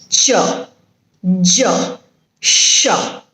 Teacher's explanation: the next one is paletto alveolar sound paletto alveolar sounds are articulated by the blade of the tongue against the teeth ridge with the front of the tongue raised towards the hard palate that is why it is known as paleto alveolar sound listen